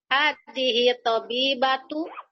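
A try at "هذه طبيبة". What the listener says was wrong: Tu atau tun?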